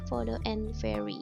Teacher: produced by pressing the upper teeth and the lower lip together